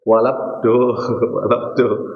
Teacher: Lamin jadi jangan sampai jadi walad tapi wad walad wad jangan jadi tebal lamnya. Lamnya tetap dalam keadaan ti tipis.